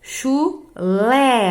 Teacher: chulé, a sílaba tônica, a forte, é a última, portanto, é uma oxítona.